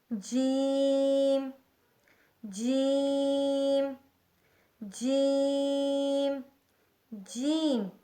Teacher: وسط زبان، یعنی زبان کی بیچ کا حصہ جب بالمقابل اوپر کے تالو سے لگے تو اس سے جیم ادا ہوتا ہے